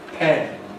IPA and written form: pen (pen)